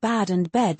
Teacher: merging two distinct English vowels into one. Merging sounds would definitely reduce clarity. It makes words like bad and bed sound identical to some listeners.